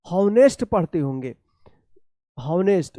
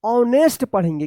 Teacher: ऐसा उच्चारण नहीं करना है, क्योंकि यहाँ पे एच जो है ना ये साइलेंट रहता है, इसका उच्चारण नहीं होता है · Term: साइलेंट एच